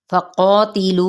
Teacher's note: अब यहाँ पे क़ा पुर है और इसी तरह अलिफ इसके ताबे हो जाएगा यानी ये भी पुर पढ़ा जाएगा। तिलू पे यहाँ पे चार हरकत इसको खींचेंगे।